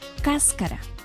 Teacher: El acento o sílaba tónica está en cas.